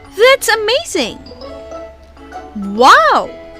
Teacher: Then we have exclamations or excited speech, rising then falling intonation.